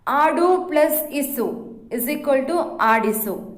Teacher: ಆಡು ಎಂಬಲ್ಲಿ ಉಕಾರವಿದೆ ಆದರೆ ಆಡಿಸು ಎಂದಾದಾಗ ಅಲ್ಲಿ ಉಕಾರವು ಲೋಪವಾಗುತ್ತದೆ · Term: ಲೋಪ ಸಂಧಿ